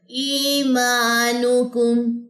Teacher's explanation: یہاں پہ نون کی پیش لمبا ہونے کا خطرہ ہے ، اس کو ذرا تھوڑا سا آپ نے دھیان رکھنا ہے،